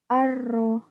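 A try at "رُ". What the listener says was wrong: Ya, coba yang ini pakai huruf R, yang R. Pakai huruf ro, aru. Getarnya hadirkan lagi. Aru, aru. Kurang getar, Aru. Kurang getar?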